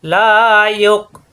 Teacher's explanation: ইয়ক হামজা সাকিন শক্ত সাদিদা, ইয়ক গলার ভিতরে আটকে যাবে , লা ইয়ক, এখানে হামজা পড়তে হবে, অ পড়তে হবে না,